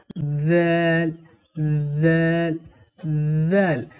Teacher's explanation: তারপরে জাল, জাল হরফকে কেমন করে পড়তে হয়? জাল হরফের মাখরাজ হলো জিহুবার আগা এবং উপরের দুই দাঁতের আগা একসঙ্গে লাগিয়ে নরম করে পড়তে হয়